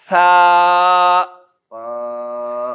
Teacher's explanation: سیٹی کے بغیر اوپر والے زبان کو باہر نکال کے اوپر والے دانت اس کے اوپر رکھیں گے تو وہ تھا ادا ہو جائے گا سیٹی کے بغیر